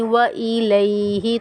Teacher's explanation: یا لین ہو رہی ہے. یا لین کو ہم نرمی کے ساتھ اور ایک الف مقدار کھینچ کر پڑھیں گے